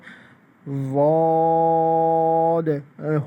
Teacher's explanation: تو اس میں یہ ہے کہ ضاد کو ہم جو ہے وہ اس کے آخری میں دال کا لفظ آتا ہے ضاد، دونوں کو نرم پڑھتے ہیں، نرم کر کے پڑھتے ہیں اور دانتوں کے سامنے کی طرف زبان لگا کے اور اس کو پڑھتے ہیں